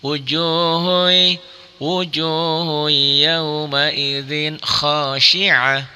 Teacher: Nah, ini adalah karena domatain ketemu ya, seakan-akan ada tasdidnya, maka hukumnya adalah idgham bi gunnah. Dimasukkan, dileburkan, disertai dengan dengung.